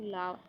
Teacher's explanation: निश्वास के समय जिह्वा के बगल से निकलने वाली व्यंजन ध्वनि। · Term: पार्श्विक व्यंजन